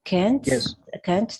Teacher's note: Algunas personas lo pronuncian con T, pero generalmente los nativos no van a pronunciar la T.